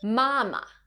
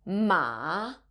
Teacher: Mama, which has the first flat tone. But if you're not careful and you end up using the third tone, ma, you will be calling your mom a horse.